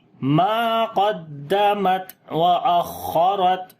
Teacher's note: خا کے اوپر بھی صفت ہمس ہوگی، یعنی سانس جاری کرتے ہیں، را کو موٹا پڑھیں گے، تا کے اوپر پھر صفت شدت اور ہمس آ جائے گی، تو واز آئے گی ما قدمت واخرت، علمت نفس ما قدمت واخرت.